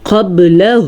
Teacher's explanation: قاف کو موٹا کر کے پڑھیں گے، با پہ کلکلا کریں گے، اور ہو اتنا لمبا کرنا ہے۔